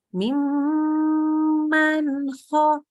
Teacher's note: Nun sukun ketemu kho harus lebih jelas. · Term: idhar